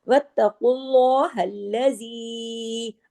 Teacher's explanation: अल्लाह के नाम से पहले चूंकि पेश है तो अल्लाह के नाम में लाम को हैवी करके पढ़ा जाएगा, इस रूल का नाम है लाम जलाला।